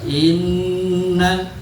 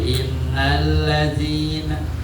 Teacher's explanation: nun siddah itu harus dengung. dicontohkan dengung posisinya bahkan ditahan dua harkat